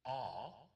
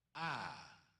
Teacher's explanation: And when you have two consonants in between your first and second vowel, it makes the first vowel short. The long A is pronounced ah, not like the short aw, but open your mouth a little wider to get the ah sound.